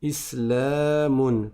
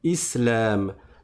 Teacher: Islamun par exemple. Mais si je m'arrête dessus, je ne prononce pas la dernière voyelle et donc je vais dire islam.